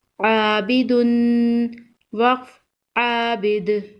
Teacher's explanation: وقف کی صورت میں دال پر قلقلہ ہوگا، دال حروف قلقلہ میں سے ہے، عابد، وقف عابد۔